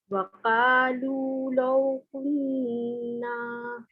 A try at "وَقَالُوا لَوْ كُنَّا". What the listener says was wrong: وقالوا لو كنا کا نہیں کہنا، آپ نے بھی قو کہنا ہے، قو قو.